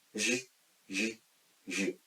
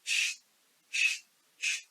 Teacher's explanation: the sound of ‘ʒ’ requires help of vocal cords or throat that is why it is voiced one and the ‘ʃ’ sound does not and that is why it is unvoiced sound.